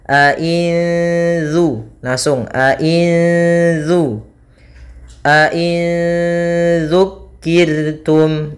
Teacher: nun suara nun, ya, nun matinya disamarkan kepada zal. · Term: ikhfa hakiki